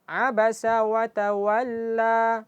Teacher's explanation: Setelah dipanjangkan langsung dipendekkan, langsung diputus suaranya. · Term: mad asli